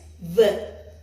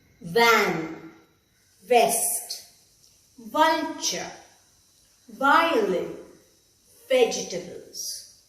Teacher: Notice how the teeth on the top touch the lower lip.